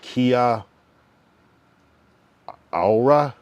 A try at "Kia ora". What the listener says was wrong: But we almost don't pronounce that first A. We just say kia ora.